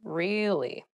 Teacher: Or to show that you're not so interested in the conversation with downward intonation.